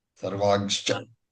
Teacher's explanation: When this Vedic anuswara is followed by the double consonant, the pronunciation is g and not gum.